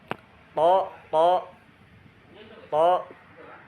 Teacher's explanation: to tuh ada di ujung lidah ya, ujung lidah dan pangkal gigi seri atas. To.